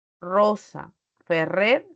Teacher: también a la r el inicio de palabras o sílaba no Rosa Ferrer se pronuncian igual no se utiliza la vibrante múltiple